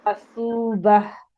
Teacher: मीम जो है वो दोनों होंठों के खुश्क हिस्से मिलने से अदा होता है · सू में जौफे दहन से वाव मद्दा अदा हो रहा है, 2 काउंट